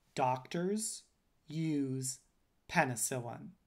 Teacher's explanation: i'm stressing the first syllable in doctors the second syllable in penicillin and stressing but lightly stressing the first syllable in penicillin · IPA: ('dɑk)(tɚz) (juz) (ˌpɛ)(nɪ)('sɪ)(lɪn)